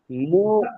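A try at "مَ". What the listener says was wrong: মু কোথায় পাচ্ছেন? মিম ওয়াও জবর মাও।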